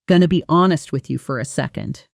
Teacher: Notice how going to compresses into gonna in natural casual speech.